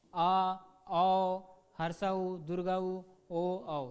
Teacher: जिन स्वरों के उच्चारण करते समय हमारा जीभ का जो है पिछला हिस्सा सक्रिय हो जाता है उसको पश्च स्वर बोलते हैं